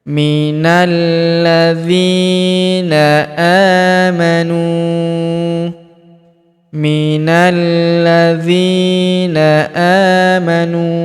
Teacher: Huruf nu kita panjangkan dua harakat karena wau sukun di depannya. Alifnya tidak dibaca.